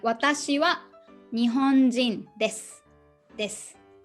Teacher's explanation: So the last u vowel usually dropped. So we will be sounding like watashi wa nihonjin desu, desu instead of desu.